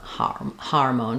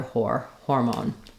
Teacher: in hormone just make sure that you're not letting it become an R sound you don't want har hormone but rather hor hormone then for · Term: or sound